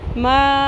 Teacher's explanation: میم زبر الف مد, 3 الف کے برابر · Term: مد منفصل